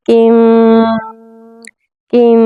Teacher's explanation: हमने नून मुकम्मल अदा नहीं करना। हमने जो ज़बान की नोक है वो ऊपर नहीं लगानी तालू पर। ऐसे क्या होगा कि जो गुनगुनाहट की आवाज़ है वो बंद हो जाएगी।